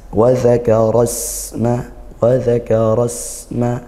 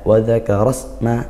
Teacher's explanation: di situ ada sin sukun, kita alirkan suaranya dan juga desiskan nafas. Nah, kalau aliran suara nama ilmu bahasa tajwidnya sifatul huruf yaitu dia rikhwah dan juga hamas desiskan nafas.